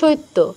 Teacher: তয়ের সাথে ইয় ফলা যুক্ত আছে, তয়ের আগে একটা ই নিয়ে আসি।